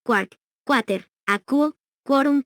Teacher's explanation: Algunas voces científicas y palabras y locuciones latinas en que este grupo de letras precede con sonido oclusivo velar sordo a las vocales a y O